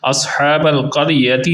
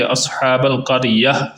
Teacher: یہ جو گول تا ہے اس کو وقف یعنی سٹاپ کی حالت کے اندر آپ ہا بنا دیتے ہیں